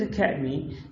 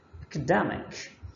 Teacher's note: academy stresses on the second but here stress changes to the third academic